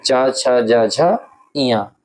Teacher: तालव्य धुनियां होती हैं च, छ, ज, झं।